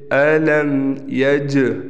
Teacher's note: أَلَمْ يَجْ، یہاں ہم قلقلہ کریں گے۔ حروف قلقلہ میں سے جیم آ گیا اور جیم ساکن ہے